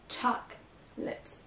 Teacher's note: Donc la première syllabe est accentuée